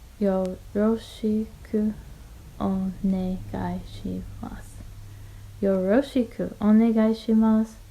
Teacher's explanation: the mas at the end, masu, becomes mas